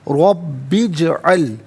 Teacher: जीम साकिन है लेकिन हरफ कलकला है तो आवाज़ लौटती हुई महसूस होनी चाहिए